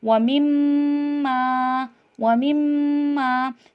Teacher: دونوں ہونٹ ہمارے آپس میں مل رہے ہیں مما ادا کرتے ہوئے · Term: میم مشدد